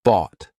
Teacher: What you're going to be doing here, though, is instead of releasing it, instead of aspirating it, instead of pushing air through, you're going to just stop. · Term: held T